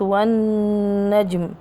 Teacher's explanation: النون المشددة أكمل ما تكون الغنة. الجيم جاءت ساكنة إذا مقلقلة، حروف القلقلة قد بجد.